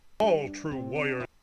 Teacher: almost like you're completely eliminating the r or at least turning it into a w and you're merging that a the I and the O together